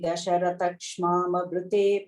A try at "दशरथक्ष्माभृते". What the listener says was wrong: You're saying an extra ma. You're saying shmama, you're saying.